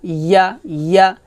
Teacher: জিহ্বার মধ্যখানে উপর তালুতে লাগাবেন, তারপর ইয়া জবর ইয়া উচ্চারণ করবেন